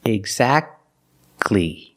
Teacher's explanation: You don't say exactly, exactly. Don't pronounce the T. Exactly. You go from the k sound to the l sound. Exactly. Exactly.